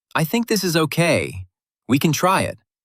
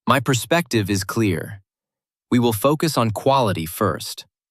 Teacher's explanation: The speaker pauses after key words, pronounces endings clearly, and keeps a calm falling tone. Even though the sentences are simple, they feel authoritative.